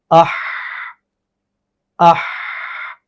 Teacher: ہا میں تو صفت رخاوت ہے کہ اس کے اندر آواز جو ہے وہ جاری رہ سکتی ہے، آواز نرم بھی ہوتی ہے۔